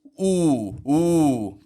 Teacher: we slowly bring in the corners of the lips to make this ooh ooh position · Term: W Glide